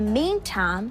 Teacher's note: you can again hear her shorten a typical diphthong word time to sound more like tam